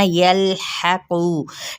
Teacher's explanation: लेकिन ये इस लाम जो पीछे या ज़बर लाम है ना, यल करके नहीं पढ़ना, यल्हक़ू, आपने लाम को हिलाना नहीं।